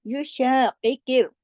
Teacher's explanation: कॉफ के नीचे चाहे जेर भी हो लेकिन कॉफ मोटा ही पढ़ा जाएगा, हैवी करके, मुंह भर के। और उसके पढ़ने का तरीका ये है कि पूरा उसका हक अदा करके उसको आपकी जुबान जो है मुंह भर के पढ़ा जाएगा और ऊपर उठती है जुबान इसमें।